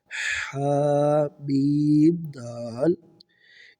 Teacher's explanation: ہا حلق کے درمیان والے حصے سے